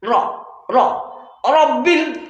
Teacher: এখানে মোটা করে পড়তে হবে, কেমন? আওয়াজটা হবে মোটা।